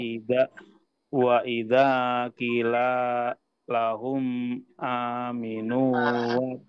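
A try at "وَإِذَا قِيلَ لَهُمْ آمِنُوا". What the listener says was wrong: Lagi-lagi di sini ki-nya Pak. Panjangkan ya.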